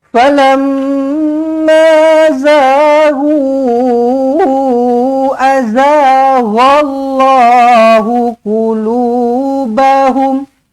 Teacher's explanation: falamma mim sabdu wajibul gunah dengungkan dua harakat